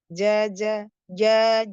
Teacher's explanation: lisan wasatu lisan tengah lidah ya, menempel sempurna ke langit-langit. Ja dia sifatnya jahar dan syiddah. Saja jangan jangan ada becek-beceknya.